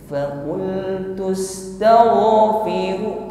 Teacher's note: Sesuai dengan sifat yang menyertainya, yaitu rakhawah. Jadi ketika ghain sukun ini suaranya masih mengalir, bunyi hurufnya mengalir. Suaranya tebal.